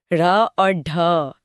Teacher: जीभ पीछे मुड़ती है और एक झटके से नीचे गिरती है। जैसे कोई चाबुक चल रहा हो। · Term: उत्क्षिप्त व्यंजन